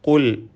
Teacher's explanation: ഈ പദത്തിലെ ഖാഫ് തഫ്ഖീം നൽകി പെരുപ്പിച്ച് സ്വരഭാരത്തോടെ ഉച്ചരിക്കണം.